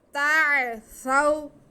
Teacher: تا پہ زبر اور عین ساکن، تو تا کو ہم عین سے ملا لیں گے